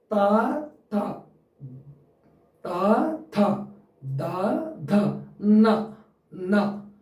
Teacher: అణ next త వర్గానికి వస్తే త థ ద ధ న ఇవి వీటిని దంత్యాలు అంటాము అంటే దంతాల మూలాల్లో పుడతాయి